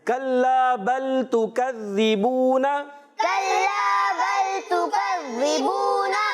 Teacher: کاف کو باریک رکھنا ہے، زال کی ادائیگی کلیئر رکھنی ہے، زال زا سے نہیں بدلنا چاہیے